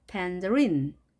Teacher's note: 강세가 뒤에 있습니다. 그래서 이렇게 뒤에가 올라가게 되겠죠.